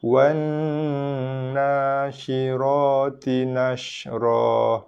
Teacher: tekan pada huruf nun, makhraj nun berserta dengan dengung dengan kadar dua harakat ataupun lebih.